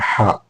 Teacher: തൊണ്ടയുടെ മധ്യഭാഗത്തുനിന്ന് ചെറിയ തടസ്സത്തോടുകൂടി വരുന്നതാണ്